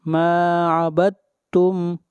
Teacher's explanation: یہاں پر دال کو نہیں پڑھیں گے، اس لیے یہاں پر ادغام ہو رہا ہے